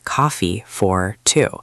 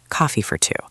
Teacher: The word for did not sound like the number 4. It sounded like fur. It became very short and joined on to the next word.